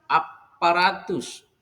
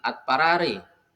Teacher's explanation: depan bunyi D sehingga menjadi sama dipengaruhi oleh bunyi P itu bunyi D dipengaruhi oleh bunyi P sehingga menjadi sama dengan bunyi P itu disebut sebagai asimilasi jadi terjadi penyamaan dari bunyi p d bunyi D Dental